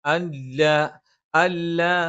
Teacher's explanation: അല്ല, അൻല സുക്കൂനിന് ശേഷം ലാ വന്നു. ഇദ്ഗാമും ബിലാഗുന്നയാണ്. മണിക്കാതെ ഉച്ചരിക്കണം. അല്ല എന്ന് പറയരുത്.